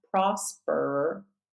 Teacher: There is no vowel here. It's just rhotic R.